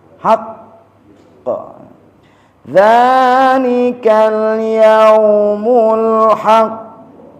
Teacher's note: Kalau enggak ada tasdid haqq. Karena ada tasdid tahan dulu.